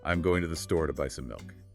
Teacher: The time between going and store is roughly the same as the time between store and buy. And those tiny function words to the to, some are just crushed down to fit that timing. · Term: rhythmic pulse